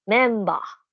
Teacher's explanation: so yung ber ay nagiging ba sa pronunciation ng Nihongo